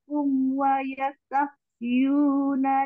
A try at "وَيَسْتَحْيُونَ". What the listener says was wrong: ya wayastahyuna sempurnakan wayastah sukunnya di situ